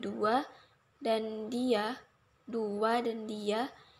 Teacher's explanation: Bunyi pelancar W dan Y meskipun dilafalkan tetapi tidak dituliskan.